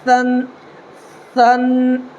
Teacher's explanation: اپنی زبان کی نوک کو جو ہے ہلکا سا دانت پر رکھنا ہے اور ہلکا سا دبا کر کے نکالنا ہے